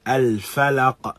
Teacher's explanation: we hear the sound of the qalqala clearer because there is nothing following the qalqala